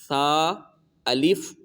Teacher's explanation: इसको बगैर सीटी के पढ़ेंगे